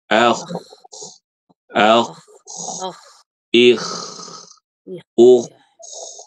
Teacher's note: ketika membaca huruf K pangkal lidah itu tuh naik. Pangkal lidahnya naik ya.